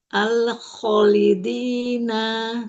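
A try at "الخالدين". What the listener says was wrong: Kho-nya ada alif sogir. Tahan lagi lam sukunnya sebentar. Al-kholidina.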